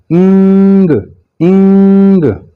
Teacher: मुंह आपका खुला रहेगा, जुबान कहीं टच नहीं करेगी और आवाज आपकी नेजल कैविटी में गुन्ना पैदा करेगी।